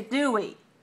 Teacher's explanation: he uses falling intonation on the tag because it's not new information